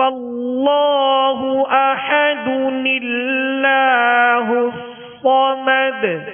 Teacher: اور جو تنوین ہے دو پیش کی، اس کے جو تنوین کا نون ساکن ہے، کیونکہ تنوین جو ہے وہ نون ساکن ہی کی اس میں آواز ہوتی ہے، تو نون ساکن کو زیر دے کر ایک چھوٹا سا نون جو ہے وہ ملا کر اس کو پڑھیں گے · اب اس کو اگر ملا کر پڑھیں گے تو اب یہاں تنوین ہے دال پر، دو پیش کی تنوین ہے، جب ملائیں گے تو آگے اللہ کا جو شروع میں حمزہ ہے یہ وصلی ہے، یہ کلام کے درمیان میں گر جائے گا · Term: نون قطنی